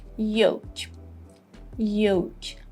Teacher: In the American pronunciation, we would say yolk, yolk, O. And as you just noticed, L is silent here.